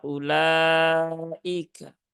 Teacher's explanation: wunya enggak dibaca jangan dibaca panjang a tetapi cukup hamzahnya dipendekkan